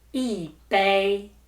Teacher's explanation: E changes to the fourth tone and bei is the first tone.